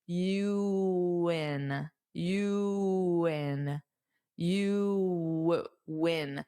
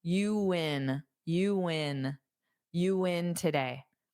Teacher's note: So you might hear a little bit of a W sound to help glide the U in.